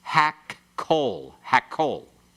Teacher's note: When you pronounce it very swiftly, you can hardly hear the 2 kofs put in there.